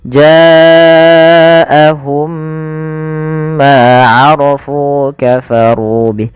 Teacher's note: Cara membacanya sama sebagaimana idgham lainnya, memasukkan mim yang pertama kedua tapi dia ditahan. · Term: idgham mimi